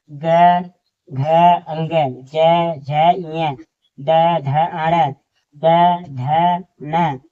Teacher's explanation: इन्हें बोलेंगे तो हमारे मुख से क्या होता है कंपन होता है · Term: सघोष